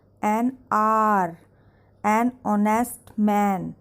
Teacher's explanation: these are starting from consonant, that is H, but H is silent in these words